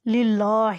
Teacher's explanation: یہ اللہ کا لام ہے اس لیے زیر آ جائے تو اسے باریک پڑھتے ہیں، اور لام کے اوپر یہاں کھڑی زبر ہے اس لیے یہ مد بھی ہوگا۔